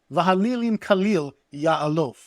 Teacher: We have this great little bit of assonance here between Halilim, the idols, and Khalil. And then we have the L sound repeated here in Ya'alof.